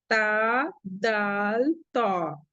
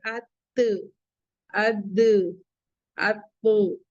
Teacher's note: जबान की नोक ऊपर के दोनों दरमियानी दांतों की जड़ से टच होगी